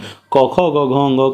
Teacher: क ख ग घ ङ कहने से कंठ में संकुचन हुआ, तो इसका उच्चारण स्थान कंठ है